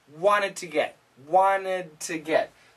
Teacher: wanted now here he says wanted to get wanted to get so the n cancels the t and this connects wanted to get